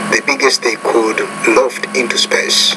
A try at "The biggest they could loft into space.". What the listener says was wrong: Obviously, the biggest they could loft, so when you have the could and the and loft is the main verb, could is the auxiliary verb, put more stress on the main verb.